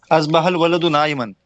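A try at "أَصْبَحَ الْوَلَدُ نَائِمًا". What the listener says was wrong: बहुत बढ़िया, शाबाश।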